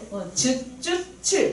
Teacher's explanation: 센 입천장 소리 뭐였는지 기억나니? 센 입천장에 혀 바닥이 닿아서 나는 소리